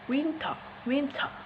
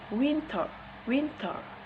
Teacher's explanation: But in the US, we say it winter, winter. The T is voice.